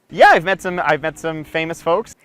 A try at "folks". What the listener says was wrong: Make sure you're pronouncing the word folks correctly. The L is silent.